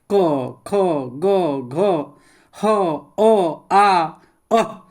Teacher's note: उच्चारण स्थान कंठ का है यह कंठ से इसका उच्चारण होता है